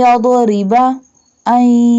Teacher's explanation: Here Ra do not pronounce boldly because Ra has kasra sign · Join the noon with ya and dad. Dad pronounce boldly.